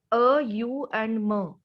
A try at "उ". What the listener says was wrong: तो इसमें ये अ, बिल्कुल सही बोला आपने, पहला है अ, दूसरा है उ, इट्स नॉट यू, इट्स उ.